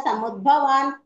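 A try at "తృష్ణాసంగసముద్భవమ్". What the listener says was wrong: సముద్భవం అండి, సముద్భవాన్ కాదు.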